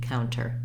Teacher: you hear counter with a true t an aspirated tea counter the first vowel in counter is the diphthong au · vowel to a more closed rounded vowel once you say cow the cow syllable is long and the tur syllable is short